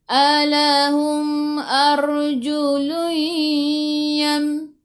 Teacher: Sebelum ra baris atas, bacaan ra-nya tebal, lidah naik ke atas.